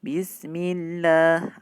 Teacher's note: mim kasrah ketemu lafzul jalalah Allah, maka lamnya dibaca dengan tipis